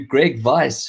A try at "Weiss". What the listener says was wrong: It's not Vice, because Vice sounds like I'm doing something naughty. It's Weiss.